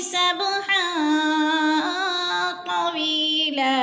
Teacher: हन दो ज़बर तनवीन अगर तो हरूफ फ़ा में से है तो गुन्ना करेंगे, नाक में आवाज़ ले जाएंगे। वी पे या मद्दा है, दो हरकात के बराबर खींच कर पढ़ना है।